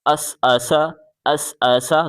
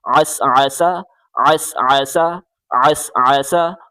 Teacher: گلے سے زور لگا کے عین پڑھیں. عین کو سین کے ساتھ ملائیں.